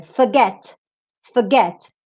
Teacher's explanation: notice the get part is strong and it's clearer